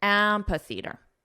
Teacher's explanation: the syllable stress is on the 1st syllable, so let's combine the sounds together and we'll emphasize the first syllable